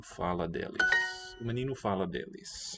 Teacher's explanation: it will be a d with an unraised vowel and the unpalatalized d